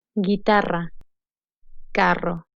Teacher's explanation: Ratón. Doble R produces a strong trill sound that does not have an English equivalent.